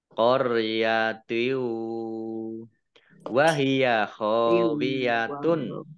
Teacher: Idgham masuk, bi dengan gunnah mendengung. Masuk dengan mendengung, yaitu masuk ke huruf wawu, mendengung wawu. Ditandai wawunya ada tasdidnya. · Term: idgham bi gunnah